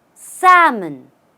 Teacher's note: the L here does not exist in the pronunciation